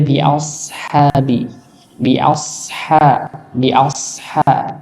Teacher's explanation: Bedanya apa yaitu pangkal lidahnya dinaikkan dikarenakan dia termasuk huruf yang tebal makanya sebenarnya sama lidahnya di bawah ya as antara Sin as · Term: huruf SH